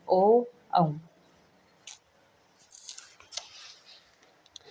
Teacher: ओ औ कंठ से भी और ओठ से भी ओठ हमारा गोल हो रहा है ठीक है ना और कंठ से भी आवाज आ रही है · ओ औ ओठ गोलाकार हो रहे हैं और कंठ से भी उच्चारित हो रहे हैं।